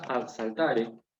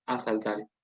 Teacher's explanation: Asimilación, que es cuando vos tenés, por ejemplo, ad saltare para recuperar el del inicio de clase, y esto hace, primero que nada, ad saltare, pero luego se asimila, la D se contagia de la S y pasa a ser otro sonido S, sibilante. Y en último lugar, se simplifica esa doble consonante a una sola.